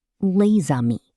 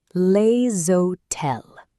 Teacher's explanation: Notice how the Z connects the two words. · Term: liaison